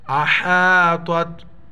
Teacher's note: ہا کو گلے سے ادا کریں گے